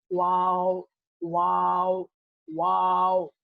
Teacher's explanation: दोनों होठों को गोल करने से ये हर्फ अदा होता है। ये 2 होठ है हमारे, इसको गोल करना है।